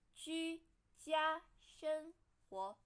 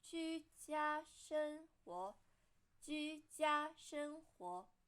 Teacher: The first three characters are all flat tone, and 活 is second tone.